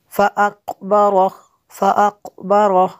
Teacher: را کو پر کرنا ہے اور قاف کو پر کرنا ہے